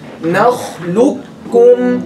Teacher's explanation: make the kha heavy